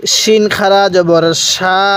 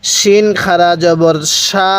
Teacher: শিনটা উচ্চারণের সময় আওয়াজটা অনেকটাই মোটা আকারে হবে